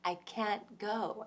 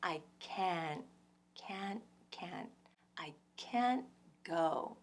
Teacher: So this double stress pattern really stands out to my ears, and that's what makes my ears so easily detect a sentence with can't. And because can't is getting stressed, well, the vowel gets its full pronunciation, so it's that full ah sound, which is distinctively American, which is like maybe a sheep or a goat, bah, or this is how we say that babies cry, wah.